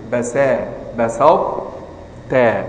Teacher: اصعد بطاء ورقق الباء والسين